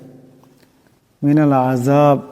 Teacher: আইন আছে আওয়াজটা গলা থেকে চাপ দিয়া আনতে হবে